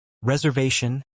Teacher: with the stress on the third syllable